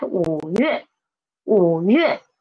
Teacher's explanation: tone of wu, tone change of wu, we won't read it as wu, we will read it as the half third tone